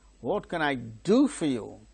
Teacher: do is the tonic syllable and there the falling tone is marked